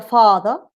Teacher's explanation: remember to make far longer than the second syllable